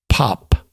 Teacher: the first is a breathier P and the second is a hard stop with a little secondary burst after it